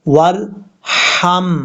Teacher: یہ باریک ہا ہے جو گلے کے درمیان سے ادا ہوتی ہے